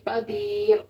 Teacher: یہ اس کے اوپر دو پیش آ رہی ہے نا تو پھر ہم اس کے دو پیش کے ساتھ اس کو وقف کریں تو پھر بھی ہم اس کو موٹا پڑھیں گے. قدیر.